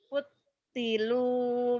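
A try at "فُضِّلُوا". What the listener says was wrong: futilu, do. Fuddilu. Fuddilu. Bukan putilu ya. Bukan T tapi D-H-O. Fuddilu. Nyamber, itu mad lazim musakal kali ini sama seperti bacanya waladhdallin gitu.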